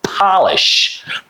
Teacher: first P sound is unvoiced consonant sound and the last last sh sound is also unvoiced consonant sound. So both time you have to push a lot of it out. So so air is involved.